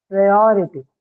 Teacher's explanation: the stress is marked onto the syllable before the one carrying ity